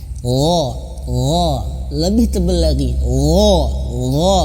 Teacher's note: dia mililiki sifat tebal Ya dia memiliki sifat tebal ya dan makhrajnya itu di pangkal tenggorokan mohon maaf ujung tenggorokan yang paling atas ujung tenggorokan dan dia tebal ya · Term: huruf gain